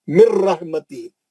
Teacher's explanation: مر نون نہیں پڑھیں گے یہاں پہ, غنہ نہیں ہوگا یہاں پہ. رحمتی ہی, کھڑی زیر کے 2 حرکت. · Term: ادغام بلا غنہ